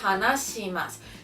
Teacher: Como sabéis, no existe si, sino que tiene que ser shi, de S-H-I, la pronunciación.